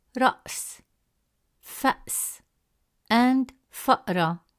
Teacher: There is a brief pause or short stop in the airflow in the middle of the word creating a distinct clear consonant sound of the gloal stop. · In these examples, the sukun is placed above the Alif Hamza to show that the glottal stop sound remains still in its original form, unaffected by any vowel